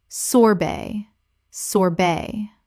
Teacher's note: The T at the end is silent in both British and American English.